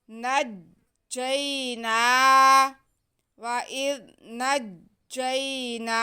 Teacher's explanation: نون پہ کھڑا زبر ہے، اس کو ہم ایک الف کے برابر کھینچیں گے۔